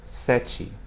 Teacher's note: Notice here the open E sounds like the E in the English word set or bed.